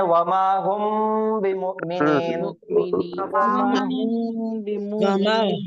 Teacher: अब मीम साकिन के बाद हर्फ कौन सा है? बा। तो बा आया तो गुन्ना होगा।